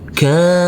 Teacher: huruf Kaf yang berfathah a bertemu dengan huruf alif yang tidak berharakat maka huruf Kaf kita baca panjang dengan panjang dua harakat